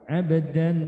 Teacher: Jadi nonnya tampil, ya, tapi disertai dengan dengung, karena itu menjadi sama, ya. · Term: akrob